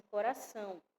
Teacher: o a é a vogal e o o é a semivogal